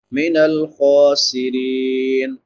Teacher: را باریک ہوگی کیونکہ را کے نیچے زیر ہے